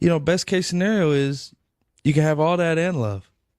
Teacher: In this clip displays what's called TH stopping.